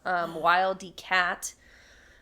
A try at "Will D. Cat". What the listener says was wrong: Sorry, it's Will D. Cat. You said Wild D. Cat. Like a wild cat, but Will D. Cat, yes.